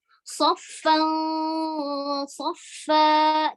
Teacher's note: itu so dia vokalnya o, maka bibir kita juga sudah ke huruf o